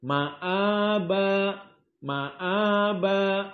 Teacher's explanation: Namun dijadikan dengan mudah mad badal, jadi mad hanya 2 harakat saja.